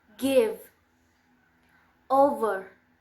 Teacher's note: v is voiced. The place of articulation is labodental and the matter of articulation is fricative.